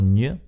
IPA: ɲ